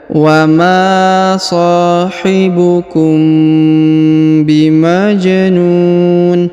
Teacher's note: huruf mim sukun bertemu dengan ba, maka ditahan 2 harokat ya dan didengungkan